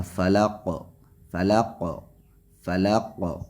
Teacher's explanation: برب الفلق، فلق فلا اس کو نہیں کھینچنا ہے، قاف کو یہاں وقف کرنے کی وجہ سے ساکن کریں گے، اور ساکن اگر کریں گے تو قاف حروف قلقلہ میں سے ہیں، قاف طا جیم دال میں سے ہیں، یہ حروف قطب جد ہوتے ہیں، لہذا قاف پہ قلقلہ کریں گے اور یہ قلقلہ سخت قلقلہ ہوگا۔ قلقلہ کی 3 قسمیں ہیں اور 3 قسموں میں سے یہ دوسری قسم جو قلقلہ کی ہے سخت والا، تو وہ قاف یہاں پہ آخر میں ساکن ہونے کی وجہ سے یہ سخت قلقلہ یہاں پہ کیا جائے گا۔